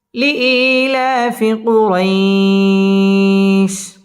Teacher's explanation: জবরের বাম পাশে জজম ওয়ালা ইয়া লিনের হরফের বামের হরফে ওয়াকফ মধ্যে লিন এক আলিফ টান দিয়ে ওয়াকফ করতে হবে